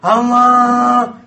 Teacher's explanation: itu suara mulut campur suara hidung